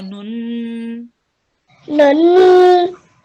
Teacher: we prolong the nasal sound for 2 seconds